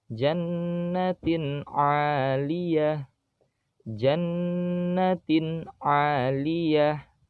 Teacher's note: tak marbutohnya berharokat kasroh tanwin bertemu dengan ain, maka juga sama, harus dibaca izhar atau jelas.